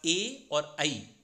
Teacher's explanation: ए और ऐ, इनका कंठ और तालु दोनों उच्चारण स्थान होते हैं। क्योंकि आप देखेंगे तो ए जो है दो शब्दों से मिलकर बनता है, आ और ई। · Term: कंठ तालु